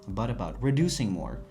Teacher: bu t'imiz bizda yumshoq d ga aylanar ekan.